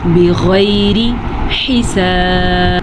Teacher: بغیر حساب، بغیر، غین کو پر پڑھنا ہے، اور یا لین ہے، یا لین کو کھینچ کے نہیں پڑھتے، را کو باریک پڑھیں گے، را کے نیچے زیر ہے